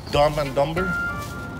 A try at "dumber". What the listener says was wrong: Wow, he said dumber wrong. It's a silent B. Like knife? Yeah, it's not knife. Just like dumber, it's not dumber.